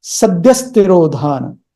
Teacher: So that S, short S sound comes instead of H. Instead of visarga, you say sadyaḥ-tirodhāna.